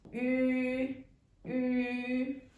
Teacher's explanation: Close a bit of your mouth like this shape. Oo, oo, ü, like a circle, and you put your sounds right in the front.